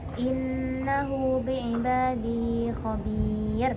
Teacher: Apabila hak kinayah bertemu dengan huruf selain hamzah, maka dinamakan mad silah syughra. Mad ini mempunyai hukum at-tabi'i, maka wajib membaca panjang kira-kira 2 harokat